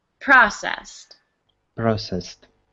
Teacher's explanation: right here is two syllables processed process processed good excellent and the emphasis is on the first syllable